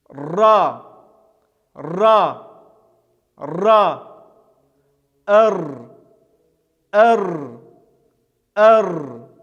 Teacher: небольшой бугорок к нему и прислоняем мы кончик нашего языка и кончик языка дрожит при произнесении этого звука поэтому этот звук называется дрожащий самантой это звук является твердым читается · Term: дрожащей сонантой